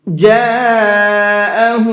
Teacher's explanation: یہاں یہ بڑا مد بنا ہوا ہے، اس کو 4 سے 5 الف کے برابر کھینچ کر کے پڑھیں گے۔